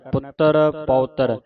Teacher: ਪੁੱਤਰ ਕੱਸ ਕੇ ਬੋਲਣਾ ਅਧਿਕ ਲਾ ਕੇ ਉਚਾਰਨ ਕਰਨਾ